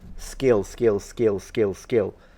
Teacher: the word skill the K is not aspirated